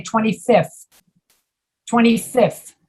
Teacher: you're saying fth that is very hard to say in english many americans simply don't pronounce the th